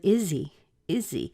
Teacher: we push the Z or the Z the Z sound over into the e · the H often disappears so that leaves us just with a little tiny EE sound